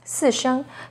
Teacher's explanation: starts high, then falls sharply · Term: Fourth tone